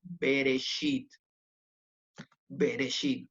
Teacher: suena como una E muy cortita cuando inicia una sílaba, ¿ah? O cuando está debajo de la primer consonante de una palabra. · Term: Sheva